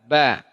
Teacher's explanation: Ba dari dua bibir ditekan, ba. Ini ta, ditekan juga tapi punya hams.